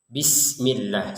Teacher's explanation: ada huruf sin yang harus kita baca sebagai huruf sin. Jangan sampai terbacanya syin atau shad.